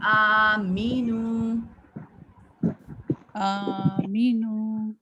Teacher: حمزہ کے اوپر کیا ہے؟ کھڑی زبر. اس کو ہم 1 سیکنڈ کے لیے اسٹریچ کرتے ہیں